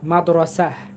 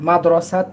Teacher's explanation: এই গোলতার ক্ষেত্রে আমরা যদি ওয়াকফ করি, তাহলে গোলতাটা হা হয়ে যায়, ছোট হা হয়